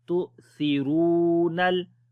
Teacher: On the hamza we make jerk sound, because the rule is whenever hamza comes with sukoon sign we make jerk sound there, so we say tu thiru. Sa we read in soft sound, ra we long due to waw madda · ha we read from the middle of the throat, ya we long due to standing fatha.